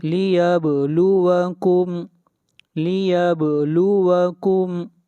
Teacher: والحیات لیبلوکم، با کے اوپر قلقلہ ہوگا، آواز کو ہلائیں گے